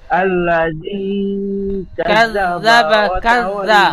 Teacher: জাল অক্ষর জিহ্বার আগা, সামনে উপরে 2 দাঁতের আগার সাথে হালকা ভাবে ঠেকে উচ্চারণ হবে।